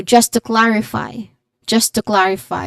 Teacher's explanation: Clarify has stress on the first syllable cla with a short a sound followed by refi with an i dip thong in fi.